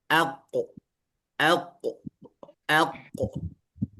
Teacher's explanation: ada sifat yang memantul masuk sifat qalqalah maka harus dipantulkan